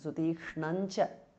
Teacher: Sutikšnam ends in anuswara followed by cha. So it becomes Sutikshnancha. Anuswara changes to nya.